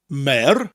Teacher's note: So you're saying the word mayor, like the mayor of a town, followed by a rolling R.